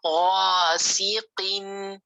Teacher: clearly اس کو موٹا پڑھیں، مخرج سے ادا کریں قاف کو